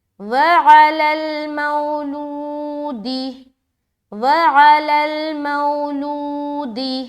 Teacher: لو میں زیادہ کھینچ رہے، میم واو زبر مو کو ہم جلدی ادا کر رہے ہیں · اس واو ساکن سے پہلے زبر ہے لہٰذا واولین کا قاعدہ بن گیا اور یہاں نرمی کے ساتھ پڑھیں گے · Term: واو مدہ